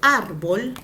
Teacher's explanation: tilde las palabras llanas por ejemplo árbol termina en el y tiene la mayor fuerza de voz en la penúltima